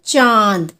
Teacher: अनुनासिक की अनुनासिक यानी कि हमारा चंद्र बिंदु तो ये जो चंद्र बिंदु होता है इसको जब हम उच्चारित करते हैं तो हमारी जो ध्वनि आती है वो नाक और मुंह दोनों से एक साथ आती है जैसे कि जब हम बोलते हैं चांद तो हमारी ना में